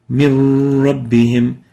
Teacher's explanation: but we pronounce it as if there is no noon